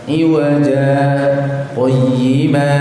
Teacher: Nah, kalau antum baca model kayak gini ya, disambung dengan ayat yang kedua, maka di ujung ayat yang pertama itu ada saktah. Saktah itu berhenti sejenak tanpa bernafas sekitar 2 harokat atau 1 alif.